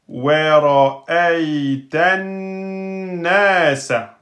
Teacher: comme c'est un noun qui porte shidda, vous ferez deux temps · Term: noun shidda